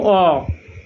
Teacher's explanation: এটি উচ্চারণ করার সময় শ্বাসবায়ু কন্ঠ থেকে মুখ দিয়ে বেরিয়ে আসছে এবং কোথাও কোন বাধা পাচ্ছে না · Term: স্বরধ্বনি